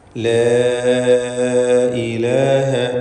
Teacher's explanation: അലിഫിന് നാലോ അഞ്ചോ ഹറക്കത്തിന്റെ അളവിൽ ദീർഘം നൽകൽ അനുവദനീയമാണ് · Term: മദ് മുൻഫസിൽ ജായിസ്